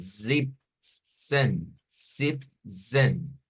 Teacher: Entonces, cuando veamos esas zetas ahí en las transliteraciones, sépase que es una S, pero vibrante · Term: S vibrante